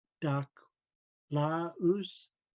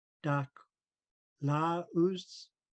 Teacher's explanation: The W is silent. We just round our lips at the end. Dak laus. Are you good?